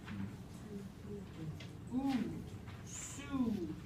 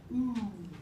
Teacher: That's a high, close, back vowel.